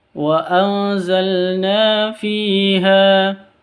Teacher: Cara bacanya samar didengungkan, samar disertai dengung karena bacaan ikhfa hakiki.